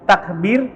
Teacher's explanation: Tapi kalau misalkan kita menyebutkan kata takbir, maka ro-nya jadi tipis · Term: ro tipis